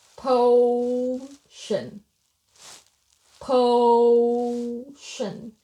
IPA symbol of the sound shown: əʊ